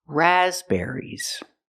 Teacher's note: the second syllable is not ER it's air air like hair and chair